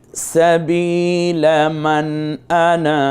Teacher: করে নিবেন পড়বেন যেই আনা টেনে পড়া জায়েজ এবং টেনে বলবেন এই আনাটা টেনে বলবেন